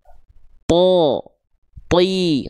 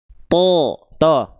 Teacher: Karena pangkal lidah naik, ini yang membuat output huruf tebal vokalnya o.